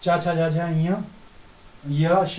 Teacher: तो तालु, तो ई च वर्ग चा छा जा झा य श इनका उच्चारण स्थान तालु है।